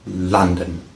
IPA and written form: ˈlʌn.dən (London)